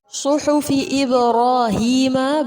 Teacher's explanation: با پر قلقلہ ہوگا، را پر کریں گے، یا مدہ ہوگا